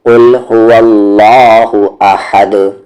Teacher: اور دال حروف قلقلہ ہے، اور اس پہ اگر جزم آ جائے تو قلقلہ ہوگا، تو احد آواز کو باؤنس کریں گے